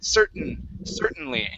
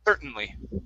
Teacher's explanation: when you have a word um that ends with a vowel sound and an n this t we're going to swallow it's not going it's sort of like a stop t okay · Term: swallow t